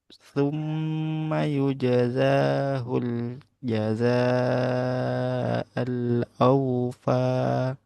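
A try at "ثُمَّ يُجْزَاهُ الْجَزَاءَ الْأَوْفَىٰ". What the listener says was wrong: Nah, nanti za-nya disempurnakan. Za, za, yujaza, gitu ya.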